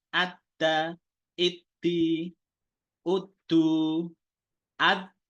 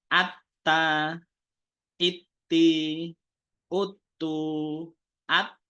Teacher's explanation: dia akan tertahan tidak ada aliran